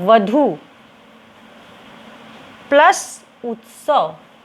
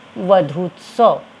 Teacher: पहले शब्द का आखिरी वर्ण है दीर्घ ऊ और दूसरे शब्द का पहला वर्ण है ह्रस्व ऊ, लेकिन जब मेल करेंगे तो यहाँ हर हाल में बनेगा दीर्घ ऊ और जो शब्द बनेगा वो होगा वधूत्सव।